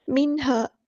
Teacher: سا، وَإِنَّ مِنْهَا، نون پہ گنہ زبانی ہو رہا ہے، منہا، یہاں پر نون ساکن کی جو آواز ہے اس کو ہمیں ظاہر کرنا ہے کیونکہ اس کے نون ساکن کے بعد حروف ہلکی میں سے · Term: اظہار